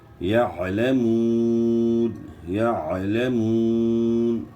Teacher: یعلمون نہیں پڑھنا، یعلمون پڑھنا ہے، عین کے بعد گلے کے درمیان سے آپ نے نکالنی ہے، یعلمون، یعلمون، واو مدہ ہے اور نون ساکن ہو جائے گا وقف کی صورت میں